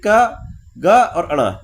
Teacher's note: वे व्यंजन जिनके उच्चारण में मुख से कम वायु निकलती है उन्हें अल्पप्राण व्यंजन कहते हैं